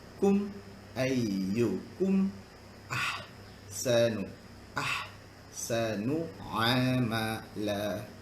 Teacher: mim mati bertemu hamzah tak dengung? Ini kita panggil dia izhar syafawi, jelas di bibir. Kum maksudnya mulut rapat.